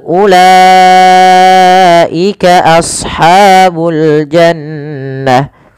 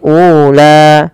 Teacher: Kemudian pada lafal ulaika ashabul jannah. U tidak boleh dipanjangkan, tidak boleh ula.